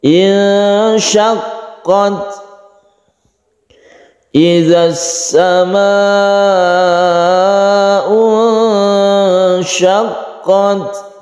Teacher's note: Nun bertemu dengan syin ini adalah ikhfa Hakiki kita dengungkan kita panjangkan